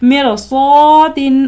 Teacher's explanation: را ساکن کے بعد حروف مستعلیہ میں سے صاد ہے، لہٰذا اس را کو بھی پر پڑھیں گے